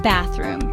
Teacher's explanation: It has 2 syllables. The stress is on bath.